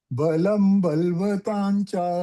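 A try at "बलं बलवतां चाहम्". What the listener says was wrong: Balvatam, you're saying, no? Balavatam. Bala. Yeah, you're not saying lawful.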